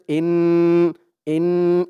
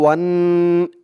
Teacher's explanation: ওয়াজিব গুন্না এক আলিফ পরিমাণ গুন্না করতে হবে